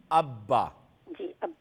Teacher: با کا مخرج ہے دونوں ہونٹوں کو اور ہونٹوں کے تر حصے کو سختی سے ملا کر ادا ہوتا ہے